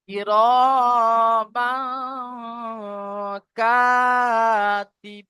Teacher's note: এখানে এসছে হুরুফে মাদ্দা, আলিফ মাদ্দা এসছে, এক আলিফ পরিমাণ টান হবে। আলিফের টান দিকে জাবার আছে তো এক আলিফ পরিমাণ টান হবে।